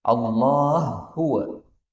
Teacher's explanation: kita temukan hak ketemu hak. Ini boleh idgham.